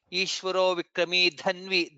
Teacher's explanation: Dha is Mahaprana there.